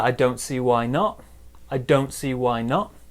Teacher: A big stress on don't, small stress on not.